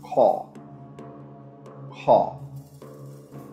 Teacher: a voiceless uvular plosive and produced by obstructing airflow in the vocal tract entirely, articulated with the back of the tongue at the uvula.